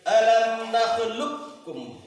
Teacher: بڑا کاف کو چھوٹے کاف میں ادغام کر دیں گے، جیسے دیکھو الم نخلقکم، لام کاف پیش لک، کاف میم پیش کم، لککم، ادغام میں متقاربین ہوا۔ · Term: ادغام متقاربین